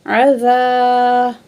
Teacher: الف زبر ذا، الف خالی ہوتا ہے، ما قبل زبر ہے، تو جب الف خالی ما قبل جو ہے زبر ہے تو الف مد ہے، 2 سیکنڈ کھینچ کے پڑھیں گے